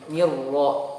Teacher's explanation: Jadi mulai setelah ni kasroh masuk ke ro langsung tebal ro-nya. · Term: ro tebal